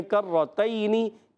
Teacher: کرتین میں کاف باریک، زبان کی جڑ اور تالو کے سخت حصے سے کاف ادا ہوتا ہے، جی ہاں۔ اور کرتین میں را مشدد ہے، ذرا رک کر ادا کریں گے، را پر ہے، زبر والا ہے تو پر پڑھیں گے۔ · اور کرتین میں را مشدد ہے، ذرا رک کر ادا کریں گے، را پر ہے، زبر والا ہے تو پر پڑھیں گے۔ کرتین، یا لین نرمی سے ادا کرنا ہے، حرکت کو بغیر کھینچے پڑھیں گے